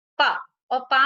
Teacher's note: पा में हमारे ऊपर का और नीचे के दोनों ओष्ठ हमारे जुड़ जाते हैं। जब हमारे दोनों ओष्ठ जुड़ते हैं तो हम पा का उच्चारण उसमें होता है।